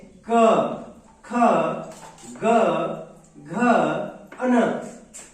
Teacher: इनका उच्चारण जो है कंठ की सहायता से होता है। जब हम इनका उच्चारण करते हैं तो हमारे मुख से निकलने वाली प्राण वायु जो है हमारे कंठ को स्पर्श करते हुए निकलती है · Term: कंठीय वर्ग